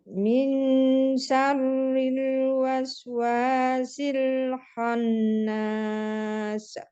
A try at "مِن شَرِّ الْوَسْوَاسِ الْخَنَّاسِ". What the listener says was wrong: Ini ro-nya itu di tasdid lagi, Bu, ditekan sedikit, Bu ya. Min syarril waswasil khannas.